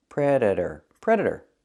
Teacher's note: The T is pronounced as a fast D.